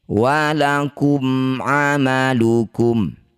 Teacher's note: Disebut bacaan namanya izhar syafawi. Baca jelas mim sukunnya rapatkan bibir tanpa dengung.